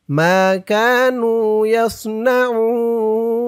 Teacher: উন অক্ফ করার কারণে তিন আলিফ টান হয়েছে